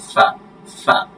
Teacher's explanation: ফা দুই ঠোঁটের মাঝখানে নিচের ঠোঁটের উপরের দাঁতটা লাগবে